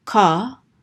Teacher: the kamats anciently said ah like as in saw or PA